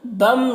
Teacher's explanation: تنوین کے بعد حروف یومن میں سے میم ہے تو ادغام ناقص ہوگا، غنہ کے ساتھ میں پڑھیں گے اسے